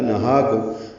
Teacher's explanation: نہاکم ہا کو 2 حرکات لمبا کرنا ہے، کھڑا زبر ہے، میم ساکن پہ اظہار شفوی ہے.